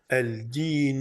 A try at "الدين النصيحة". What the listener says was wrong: pas al-dinu. Ad-dinu. Ad-dinu.